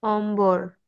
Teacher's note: ম এর সাথে বফলা উচ্চারণে অবিকৃত থাকে